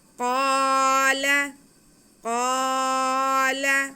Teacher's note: قاف کو موٹا کر کے پڑھیں گے کیونکہ حروف مستعلیہ میں سے ہے۔